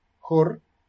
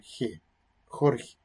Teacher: con vocal posterior y esta va con vocal anterior, resulta que la pronunciación del mismo fonema en las dos sílabas distintas, en un caso es distinta, pero en un caso es velar, jor, y en el otro caso es pospalatal